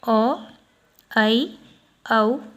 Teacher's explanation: अर्धविवृत स्वर, इसके उच्चारण में मुख आधा खुलता है, ओ, ऐ, औ। ये जो है अर्धविवृत स्वर है, मुख आधा खुल रहा है।